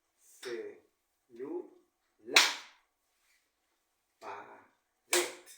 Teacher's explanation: la mayor fuerza de voz recae en la última sílaba. Por lo tanto, nos encontramos ante palabras agudas.